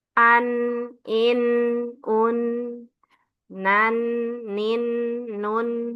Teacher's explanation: nun di ujung lidah kena ujung langit langit atas